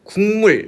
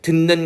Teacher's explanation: 비음이 아니었던 것이 인접한 자음 때문에 비음으로 바뀌는 거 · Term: 비음화